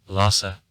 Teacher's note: the accent falls on the second syllable